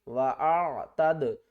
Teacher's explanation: عین کو ہم نے حلق کے درمیان والے حصے سے ادا کرنا ہے